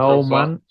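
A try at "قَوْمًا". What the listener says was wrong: Little qaf. So you should pronounce it in a thick sound. Qawman. Qaf. Qawman.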